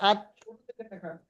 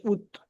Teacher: তা দাল ত জিহ্বার আগা এবং সামনের উপরে দুই দাঁতের গড়ার সাথে লাগিয়ে উচ্চারিত হয়